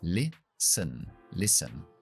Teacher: Empezamos con la I y terminamos con la schwa.